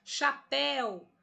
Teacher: chapéu até o é a sílaba mais forte da palavra chapéu última sílaba oxítona terminada em ditongo aberto